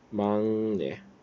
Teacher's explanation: 이 기억이 뒤에 있는 니은 때문에 이응으로 바뀌었다. 얘는 교체 중에서 비음화.